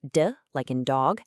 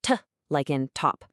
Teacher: the big difference between them is just this tiny delay. We're talking milliseconds in when your vocal cords start to vibrate. So, you can actually create this whole smooth spectrum of sounds that goes from a perfect duh all the way to a perfect t.